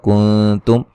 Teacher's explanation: کنتم نون ساکن کا باریک اخفا ہے